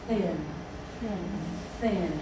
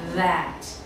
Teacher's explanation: hands on your neck and then say that you see how you produce the first th sound without any voice any vibration thin thin and you can draw it out so you don't